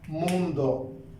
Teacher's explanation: El grupo de intensidad va en la sílaba mun, la palabra termina en vocal, es una palabra grave, pero no va a llevar el acento.